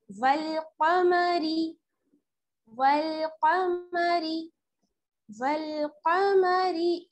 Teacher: वल्कमरी, वाव को हम लाम के साथ मिलाएंगे, वाव लाम जबर वल, काफ जबर का, वल्का, मीम जबर मा, वल्कमा, रा ज़ेरी, रा को बारीक पढ़ना है क्योंकि इस पर क्या है, ज़ेर की हरकत